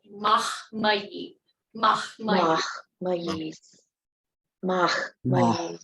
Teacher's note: even though that H is next to an M, we have to make that H so it's mahmayi.